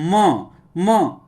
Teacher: सट रहा है और से भी आवाज आ रहा है इसलिए म का उच्चारण स्थान ओस्ट और नासिका है